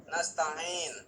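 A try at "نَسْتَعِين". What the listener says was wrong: Tutup hidungnya ketika menyebutkan ta'in. Nasta'in. Tutup hidungnya coba. Keluar gak suara bunyinya? Ini tutup lubang hidungnya. Nasta'in. Ah, ada yang tertahan ya di hidungnya. Berarti selama ini ainnya keluar dari hidung. Dan itu salah. Harus dari sini ya, tenggorokan.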